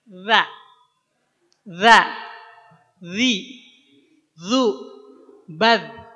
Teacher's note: Ujung lidah nempel ke ujung 2 gigi seri atas. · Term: zal